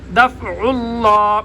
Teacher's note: عین کو گلے کے درمیان سے پڑھیں گے